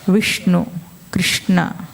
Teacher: షకారం పలుకుతుంటే అక్కడ తగులుతుంది అంగిలి.